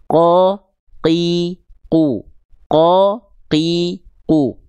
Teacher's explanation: Apabila tepat dilafalkannya pada titik tumpu ini, pangkal lidah nempel ke langit-langit lunak saja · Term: huruf qaf